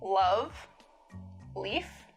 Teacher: a light L, the sound that you would find in a word like, love, leaf. Right, so New York Latino English speakers have a particularly light L.